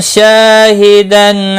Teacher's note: الف مدہ ہے، شا 1 الف کے برابر کھینچ کر پڑھیں گے